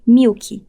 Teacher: nossa variedade do português evita deixar a consoante oclusiva K sozinha no final da sílaba